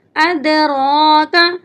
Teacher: یہاں پر را کے اوپر کھڑی زبر ہے، کھڑی زبر کو ہم ایک الف کی مقدار کے برابر لمبا کر کے پڑھیں گے